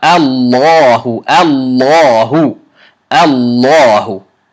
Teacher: It's because Hamza Fatha Lam Shadda, or the letter previously right before it is a Maftuha letter. The lafzul jalala needs to be made heavy.